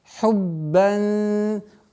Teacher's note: Удваиваем ба, а потом применяем правило ихфа. Хуббан. Назализация в размере двух огласовок удерживаем. · Назализация в размере двух огласовок удерживаем. Это правило сокрытия.